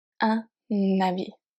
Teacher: H muet acts like a vowel. We are going to make the liaison between the word starting with H and whatever is before.